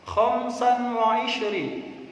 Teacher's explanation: ini juga ada bacaan tanwin bertemu huruf huruf ww maka membacanya harus Idam bunah memasukkan suaranya tanwin pada huruf berikutnya